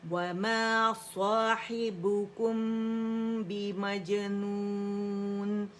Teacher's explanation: میم سکون کے بعد با آئے گا تو اخفا شفوی ہوگا، میم کو چھپا کے پڑھا جائے گا، دونوں ہونٹوں کو نرمی سے ملائیں گے